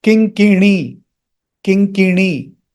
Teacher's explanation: Note that na is retroflex.